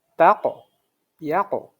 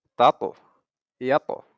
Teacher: যেহেতু ত, কফ এগুলো একটু মোটা হরফ, এগুলোর কলকলাগুলাও মোটা